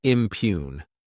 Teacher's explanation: this word has 2 syllables, and the stress is on that second syllable